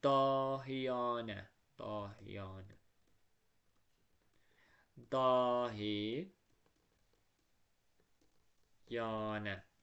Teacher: Sonu namə, yanə və anə ilə bitən sözlərdə adətən a uzun tələffüz olunur. Yəni namədəki a uzun tələffüz olunur.